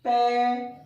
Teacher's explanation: पे तो होठ बंद हुए और खुले, न दांत टकराते न जीभ उठती है ना। पे, फे, भे, मैं है, जीभ जो है वो नीचे एक ही स्थिति में बनी रहती है नीचे वाले दांतों पर, और सिर्फ होठ ही खुलेंगे, होठ ही बंद होंगे। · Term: ओष्ठ्य वर्ग